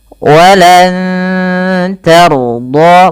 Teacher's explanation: huruf ro-nya dibaca dengan tebal karena ia huruf ro yang sukun didahului dengan fathah. Walan tarda, bukan tarda.